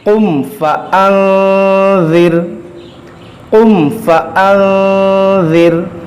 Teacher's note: را ساکن سے پہلے زیر ہے تو یہ را کو باریک پڑھیں گے · نون ساکن کے بعد ذال، اور ذال حروف اخفا ہے، اس لیے ہم نے یہاں پر غنہ کیا